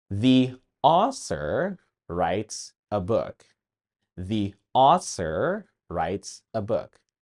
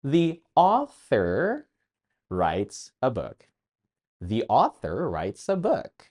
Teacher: Did you notice? The word ‘author’ was pronounced ‘ausor’. Again, my tongue was behind my teeth.